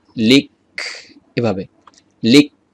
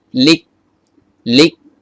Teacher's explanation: হামসের দশটি অক্ষরের মধ্যে আটটি অক্ষরে নরমালি বাতাস বের হয় কিন্তু কাফ আর তা এই দুইটা অক্ষরের ক্ষেত্রে বাতাস বের হতে চায় না একটু মনে করে বাতাস বের করতে হয়